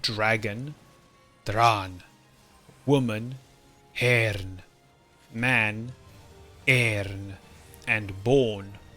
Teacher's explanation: it is a dental alveolar nasal sound